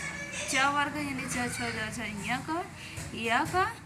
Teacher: इ ई का च वर्ग यानी च ञ का य का और तालव्य स का उच्चारण कहां से होता है? तालु से होता है।